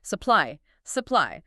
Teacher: In this word, the stress lands heavily on the second part, P-L-Y. So the U at the very beginning of the word gets squashed before we even reach the main event. The U turns into a schwa.